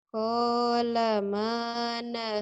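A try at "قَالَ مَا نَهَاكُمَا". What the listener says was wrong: kuma pendek. Ayo ulang lagi.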